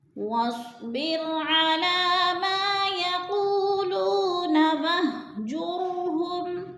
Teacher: वस्बिर रो बारीक पढ़ी जाएगी, रो साकिन है और इससे पहले ज़ेर है तो रो बारीक पढ़ी जाएगी। मा अलिफ मद्दा है, खींच कर पढ़ेंगे दो हरकात के बराबर।